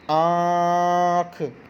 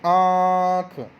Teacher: हमारे मुंह से और नाक से दोनों से आएगी जैसे आख तो हमारा मुंह भी खुला और नाक में से भी आवाज आई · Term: अनुनासिक